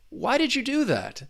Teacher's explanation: But just when you think focus on that did you and instead of pronouncing the words individually you can blend that duh and y together and you get that slight j